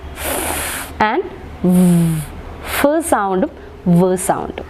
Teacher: So this sound or these sounds is produced by using the 2 parts, which means the lips and the teeth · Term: labiodental sounds